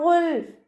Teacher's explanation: ഗൈനിൻ്റെ മഹ്റജ് വരുന്നത് അദ്നൽ ഹൽക്കാണ്, തൊണ്ടയുടെ ആദ്യ ഭാഗം. അപ്പോൾ സൗണ്ട് അയിനായി പോവാതെ ശ്രദ്ധിക്കുക കേട്ടോ.